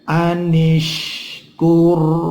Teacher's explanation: ro mati sebelumnya ada dhammah, itu dibaca tafkhim tebal